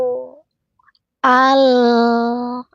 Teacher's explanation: al sedikit mengalir pada lam sukun tawasud tidak al tidak boleh ada pantulan suara pada lam sukun